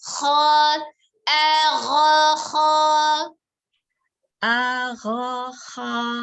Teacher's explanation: Ngambilnya jangan dari tengah, jangan di ha, tapi dari atas, tenggorokan atas.